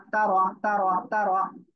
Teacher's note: র অক্ষরের উপরে জবর মোটা আওয়াজে পড়তে হবে